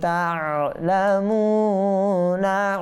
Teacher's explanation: তা'লামুনা ওয়া মাদ্দা, না হারকাত, না এটা টানা যাবে না, মু টানতে হবে ওয়া মাদ্দা হওয়ার কারণে